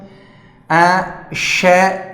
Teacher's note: तालु से इसका उच्चारण होने के कारण इसे तालव्य श कहते हैं।